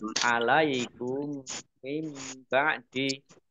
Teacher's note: mim sukun bertemu dengan huruf mim Idam Mimi atau mutamilain dibaca mendengung mendengung mim ditandai mimnya ada tasdidnya mim tasdid dibaca gunah atau